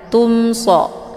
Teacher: bertemu dengan huruf Shad ini dinamakan dengan izhar syafawi cara bacanya mimnya dibunyikan secara jelas atau jelas bunyi mnya cukup ditekan saja tidak perlu ditahan